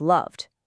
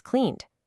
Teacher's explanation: if the verb ends in a voiced sound, one with that buzz like v or n, the ed ending sounds like a soft d